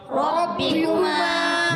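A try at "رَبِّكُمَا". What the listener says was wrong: بہت زیادہ موٹا بھی نہیں کرنا، ٹھیک ہے؟ یہ بھی غلط ہو جائے گا کیونکہ حرف مستعلیہ نہیں ہے نا، تو اس کو را پر زبر پیش کی وجہ سے ایک لمٹ میں ہم موٹا کریں گے، ٹھیک؟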